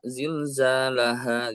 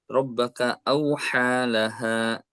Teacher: Huruf H ini adalah huruf yang keluar dari pangkal tenggorokan, yaitu sama dengan huruf hamzah.